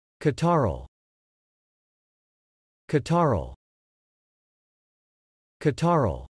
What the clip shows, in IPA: kɑtɑɹəl